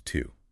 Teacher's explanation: The strong form is to. With a long, rounded ooh sound, your lips are pushed forward. But in a sentence, before a consonant, it shrinks into a schwa.